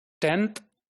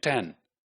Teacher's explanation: the n in 10th is basically a dental n, but in 10, the n sound in 10 is more alveolar